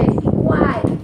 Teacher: Iguais é uma sílaba só. Nessa sílabazinha aí a gente vê que tem 3 vogais, ou seja, semivogal, vogal, semivogal. Sempre um tritongo.